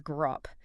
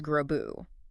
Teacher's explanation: The word for coffin is grop, but to coffin is grobu. Again, P becomes B. And physically, a B is just a voiced version of P, right?